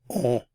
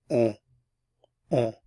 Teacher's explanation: You're just pronouncing the vowel on, and it's nasalized, so on, on. The N isn't pronounced.